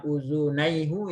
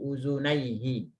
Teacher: karena sebelumnya adalah ya sukun, maka yang asalnya hu itu diganti barisnya menjadi kasroh untuk memudahkan pengucapan. Kalau kita bilang uzunaihu itu agak sulit ya mengucapannya.